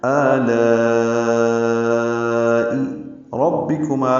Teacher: ربکما میں را کو پر پڑھیں گے، با سے ملائیں گے، را کی زبر کی وجہ سے را کو پر پڑھ رہے ہیں